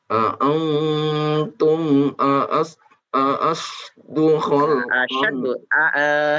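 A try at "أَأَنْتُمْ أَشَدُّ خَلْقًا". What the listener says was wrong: Hamzahnya satu saja. Antum asyaddu.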